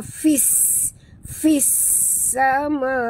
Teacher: Lazi fi maqtabi'i lahu hu di sini maqsilah qasirah ada waw kecil di hujung ni ma maqtabi'i fis sama wa fis masukkan bunyi fa terus ke dalam sin tanpa membunyikan alif lam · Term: idgham syamsi